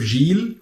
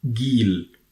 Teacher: instead of Jill which is the standard Arabic and also the Gulf and the Levantine we say in Egypt Gil